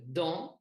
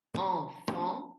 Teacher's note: Donc, le son en, qui est un A nasal, c'est pour ça qu'on a un A et les sons nasaux, ils sont représentés avec une petite tilde.